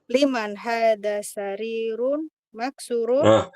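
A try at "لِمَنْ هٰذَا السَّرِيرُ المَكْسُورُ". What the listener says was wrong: Salah Ibu, maaf. Bukan sarirun bacanya. Salah. Liman hadas sariru. Bukan maksurun. sebagai naatnya, maka ditambahkan apa? Kan man'utnya as-sariru. Man'utnya as-sariru. Maka naatnya al-maksuru. Nah, jadi liman hadas sarirul maksuru. Tidak ditanwin.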